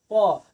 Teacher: हम प को उच्चारण करते हैं तो दोनों ओठ हमारे आपस में सटते हैं, तो इसे हम कहते हैं प वर्ग, यानी ओष्ठ, ओठ के अंतर्गत आता है।